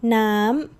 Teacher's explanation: High, up and staying bright.